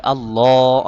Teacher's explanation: আল্লাহ ল তে মোটা করতে হবে। আর এক আলিফ টান দিতে হবে। আল্লাহ অনেকে আল্লাহুম্মা কয়।